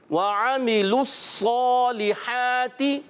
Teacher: صاد کو پر رکھیں گے، موٹا حرف ہے، بہت زیادہ موٹا کرنا ہے